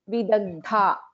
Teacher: first da is alpaprana, second dha is a mahaprana